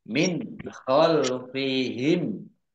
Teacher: nun sukun bertemu dengan huruf kha bacaan idhar dibaca jelas